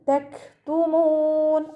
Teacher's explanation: കാഫ് സുക്കൂനാവുമ്പോൾ കുറച്ച് എയർ പുറത്തോട്ട് പോണ സൗണ്ട് കൊടുക്കുക കേട്ടോ. കുറച്ച് കാറ്റ് പുറത്തോട്ട് പോണ സൗണ്ട് കൊടുത്തിട്ട് ഉച്ചരിക്കുക.